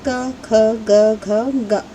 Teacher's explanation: कंठ, और व्यंजनों में पहला स्थान है क वर्ग का। तो ये जो क वर्ग है वो स्वर यंत्र के पहले स्थान यानी कंठ से बोले जाते हैं